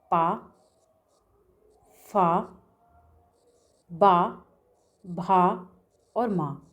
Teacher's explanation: ओंठ से होता है। जब दोनों ओंठों को आपस में मिलाते हैं तभी इनका उच्चारण होता है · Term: ओष्ठ वर्ण